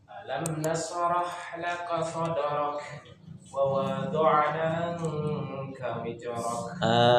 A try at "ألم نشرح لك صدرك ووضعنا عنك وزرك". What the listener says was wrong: Yang pertama nunnya dipanjangkan. Kemudian ini zaid jangan jadi jim, jangan wijrok tapi wiz. Ya, wiz. Nunnya panjang ya. Wa wada'na 2 harokat matobi.